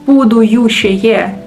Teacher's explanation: so they add U sound, which is unnecessary and shouldn't be there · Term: extra U